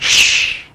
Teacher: شوف الشين تفيد التفشي، يعني الفهم كامل ش تنشر كامل ش، فلما يعني تفيد التفشي، فأعطوها كامل يعني نفسها كامل.